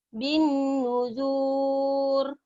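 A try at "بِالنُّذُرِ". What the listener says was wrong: bin nudhur, nggak ada panjang. Bin nudhur. Bin nudhur. Bin nudhur. Nggak ada yang panjang. Bin nudhur.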